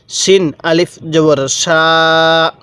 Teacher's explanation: এই শিনের উচ্চারণটা কিন্তু আমি একটু মোটা করে করছি